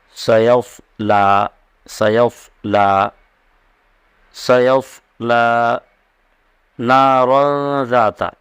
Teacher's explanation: لام کو پر نہیں پڑھنا ہے، لام کو ایک دم سادے انداز سے ادا کرنا ہے